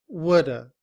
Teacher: reduced form we do not say would have we say Woulda would stays the same but have is reduced to the schwa and sounds like uh